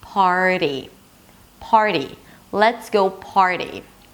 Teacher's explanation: you bring the tongue back for the R, and then you bring it forward for the flap T. For the flap T, the tip of the tongue touches the upper palate slightly, like giving it a high five.